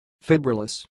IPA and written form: faɪˈbrɪləs (Fibrillous)